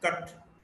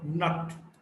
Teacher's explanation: Central, central between open and half open, neutral, short vowel.